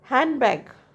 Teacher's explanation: Deletion. Handbag, often deleted. D is deleted.